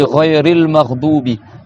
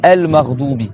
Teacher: Quand tu fais la liaison, tu prolonges pas le A. Tu dis Ghayril Maghdubi.